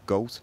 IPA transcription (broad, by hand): gowtᶿ